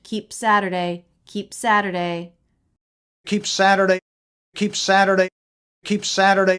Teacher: this is a stop consonant and he doesn't say Keep Saturday we don't release the p and then make the S we just stop the air for the P keep Saturday and then we go right into the S sound